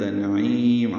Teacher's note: عین وسط حلق سے ادا کریں گے، لمبا کریں گے، میم ساکن پہ اظہار ہوگا، اظہار شفوی، ہونٹ بند کر لیں گے۔